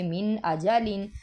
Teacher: تو ادھر ہم نے من اجالن میں غنہ نہیں کرنا، اس کو جیسے ہم ایز اٹ از پڑھ رہے ہیں ایسے ہی پڑھیں گے